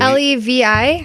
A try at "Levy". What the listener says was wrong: No, VY. Levy. Levi would probably be with an I.